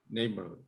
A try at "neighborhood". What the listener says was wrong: Let me hear that D. Neighborhood.